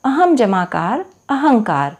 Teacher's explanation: एक अन्य उदाहरण देखिएगा, अहम जमाकार अहंकार। यहाँ पर म के बाद क वर्ग का वर्ण आने के कारण म का परिवर्तन क वर्ग के पंचम वर्ण के रूप में हो जाता है और शब्द हो जाता है अहंकार।